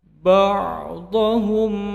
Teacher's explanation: mim sukun bertemu ba, menjadi Ikhfa Safawi, dipanjangkan dua harakat.